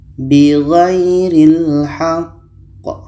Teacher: Maka ketika qa mati diiringi tasydid itu hukumnya qalqalah akbar. Cara bacanya kita berhenti 2 detik lebih kurang, setelah itu baru pantulkan.